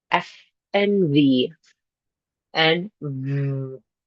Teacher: labial is your lip, dental teeth. Teeth on lip. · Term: labiodental sounds